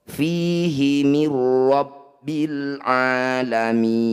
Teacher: Cara bacanya bunyi nun sukunya langsung masukkan pada ro. Mir, nun sukunya hilang, masuk ke ro. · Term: idgham bila gunnah